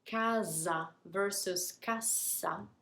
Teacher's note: Casa, that S is pronounced more like a Z.